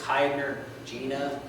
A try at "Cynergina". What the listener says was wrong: I think it's a Cynergina, but I'm not sure about that soft C on the AEs.